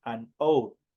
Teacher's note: Entonces, hour obviamente detenta como una vocal. La pronunciación recae directamente sobre la vocal porque la H no tiene sonido.